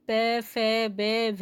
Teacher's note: जब हम पे, फे, बे, भे बोलेंगे तो हमारे दोनों ओष्ठ यानी होठ आपस में मिलते हैं।